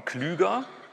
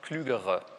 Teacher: da haben Sie hier R-Vokalisierung am Ende, weil das R am Ende des Wortes steht und damit auch am Silbenende.